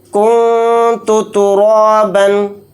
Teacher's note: کیونکہ تا اخفا کے حروف میں سے ایک حرف ہے، تو نون کی آواز کو ناک میں چھپا کر اخفا کریں گے ، یہاں پر بھی کنتو نہیں کہیں گے، جلدی نہیں پڑھیں